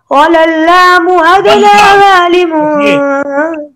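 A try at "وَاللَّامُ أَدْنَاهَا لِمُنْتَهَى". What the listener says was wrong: ये एक लाम पड़ी जाएगी ना, पहली लाम तो नहीं पड़ी, उसमें इदगाम हो गया ना, और रूफे ये शमसी है ना, वल्लामु अदनाहा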